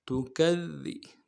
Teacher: ذال کو باریک ادا کریں گے، ذال کے اوپر تشدید ہے زور دیں گے